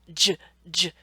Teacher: they start with a stop, a little buildup, and then we release that air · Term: affricate